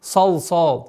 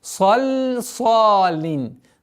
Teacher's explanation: Долгота в размере двух огласовок фатха. Обратите внимание на лям после между двумя звуками сад. Она не твердая, она не должна быть сал.